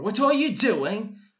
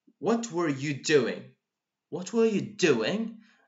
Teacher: So the do is completely and utterly stressed.